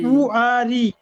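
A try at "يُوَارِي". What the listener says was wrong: ইউয়ারি, মুখটা একটু ওয়াও যখন উচ্চারণ করবে মুখটা একটু গোল হবে, ঠিক আছে? মুখটা ঠিক এরকম গোল হবে। ইউয়ারি, ইউয়ারি।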